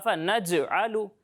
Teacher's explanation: جب آپ جیم کی ادائیگی کریں گے نا تو اس کی آواز کو آپ نے مخرج میں ہلانا ہے. یعنی آفا نج علو نہیں پڑھیں گے، اسے ایسے پڑھیں گے آفا نج علو. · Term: کلکلہ